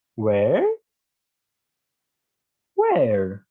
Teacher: So for the pattern for rise and fall, what we do is that we start from the bottom, we go up, and we go down again